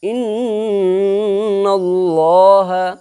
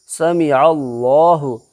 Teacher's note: اللہ کے لام سے پہلے زبر ہے اس لیے اللہ کا لام پر ہوگا